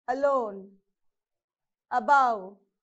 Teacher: So A is a weak prefix, so you're not supposed to use stress on that.